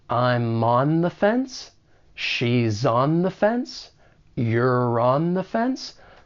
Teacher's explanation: you may be able to link that final consonant sound with the beginning vowel sound in on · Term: linking